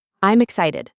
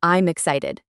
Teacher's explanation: Try to push the M sound at the end of I am into the start of excited. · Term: link